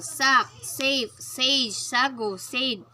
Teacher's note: The alveolar sibilants. Voiceless alveolar sibilants. Initial. Sack, safe, sage, sago, sade.